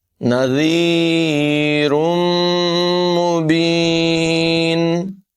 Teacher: تنوین کے بعد میم ہے، یہاں پر بھی غنہ کر کے پڑھیں گے۔